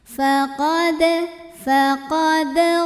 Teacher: hukum Qalqalah Sugra karena huruf Dal ini sukunnya asli ya dan ada di tengah bacaan maka dibacanya dipantulkan dengan pantulan yang ringan dan kecil